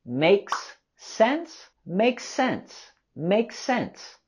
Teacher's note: And we can also link the two words together with the S sound.